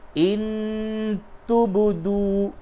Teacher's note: ان تبدو، تب با میں قلقلہ کیجئے اور واو مدہ ہے، اس کو کھینچئے، اور نون ساکن کے بعد تا ہے، اس جگہ پہ اخفا کیجئے۔ ان تبدو، 3 قاعدہ، اخفا، قلقلہ، واو مدہ۔